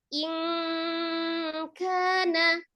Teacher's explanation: Tapi kalau yang dia setelah nun sukun atau tanwinnya itu huruf qaf atau kaf. Nah, itu lebih menyerupai kayak seperti kita bunyi ang gitu ya. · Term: ikhfa